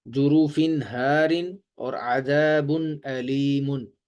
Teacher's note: تنوین کے بعد حمزہ بھی آ جائے تو حمزہ حروف حلقی میں سے ہے، لہٰذا یہاں پر بھی غنہ نہیں ہوگا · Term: اظہار